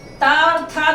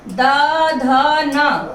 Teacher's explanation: त और थ दोनों अघोष हैं, द, ध, न तीनों घोष हैं और अल्प प्राण महाप्राण का वही क्रम रहेगा।